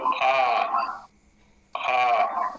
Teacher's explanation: मात्रा काल बढ़ जाएगा स्थान वही रहेगा प्रयत्न वही रहेगा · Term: दीर्घ